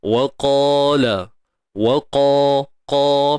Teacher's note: Pastikan huruf qaf ni kita tebalkan tuan-tuan. Huruf qaf tebal selamanya. Okey, dan dipanjangkan 2 harakat.